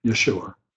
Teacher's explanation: with the J sounding like a Y and the accent on the second syllable, Yeshua. So I shall refer to him as Yeshua because I did all week, and I'm so much more comfortable.